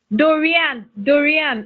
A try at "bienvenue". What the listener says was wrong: You are pronouncing the last N. Are you supposed to pronounce the last letter?